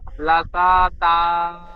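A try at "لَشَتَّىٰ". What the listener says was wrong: লাশাতা হবে না, সিন টান হয়ে যাচ্ছে, লাশাত্তা, সিনটি তার সাথে যুক্ত হবে। জি, তা টান।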